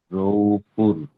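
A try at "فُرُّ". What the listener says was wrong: র জবর র, র জবর র, দুবার উচ্চারণ হবে। রটা দুবার উচ্চারণ হবে, ফা র পেশ, ফা র দু পেশ ফুর, র জবর র, র উ ফুর র।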